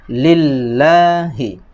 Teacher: panjangnya satu ayunan mat tabi'i